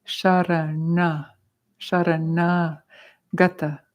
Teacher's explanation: So you'll notice there's some N's in here with dots under them, and that means it's a retroflexive na